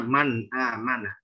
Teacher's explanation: mim dan nun sakinah tersebut sejatinya ada guna, tapi gunanya naqisah, kurang gitu ya, hanya satu